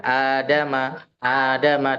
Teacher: di sini a itu dibaca dua harakat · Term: mad badal